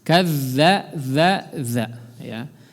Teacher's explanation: huruf zal sering kita ingatkan, keluarkan ujung lidahnya.